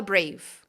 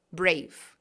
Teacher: Você vai falar brave, como se parasse no V